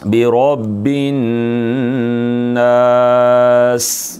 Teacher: सीन में सीटी है और ये बारीक है।